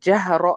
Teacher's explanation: را یہ فتحہ کے ساتھ ہے تو اس کو بھی موٹا پڑھیں گے